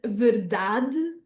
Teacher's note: we would say the word verdade with a very closed E at the end there